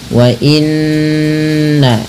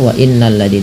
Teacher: Ini ada bacaan gunnah, cara membacanya menahan bunyi suara n-nya atau bunyi suara nun-nya sepanjang 2 harakat. Wa inna baru dilepas ya.